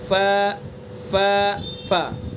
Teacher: ثنایا علیہ کے کنارے کو نیچے کے تر والے حصے پر جو ہونٹ ہے تر والا حصہ وہاں پر لگائیں گے اور ادا کریں گے ف ف ف۔ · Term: فا